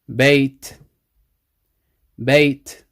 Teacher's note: when you stop there's no n sound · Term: n sound is dropped